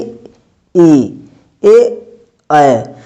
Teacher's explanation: जीभ का आगे वाला हिस्सा उठ रहा है हमारा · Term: अग्र स्वर